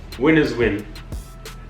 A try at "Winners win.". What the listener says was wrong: Gotta say more emphasis though. Winners win. emphasis. Say winners. See your lips. Winners. Winners win.